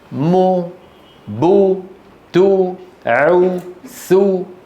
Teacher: لما ننطق حرف مضموم عملان: المخرج الأصلي وضم الشفتين اللي هو مخرج الواو